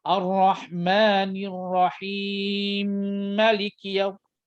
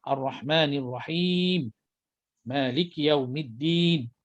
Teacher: Dia gabungkan mim dengan mim yang kedua. Mim jadi seolahnya mim yang rahimi itu berbaris. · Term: idgham mutamatsilain kabir